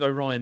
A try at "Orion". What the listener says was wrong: You sounded like you're saying like O apostrophe Ryan.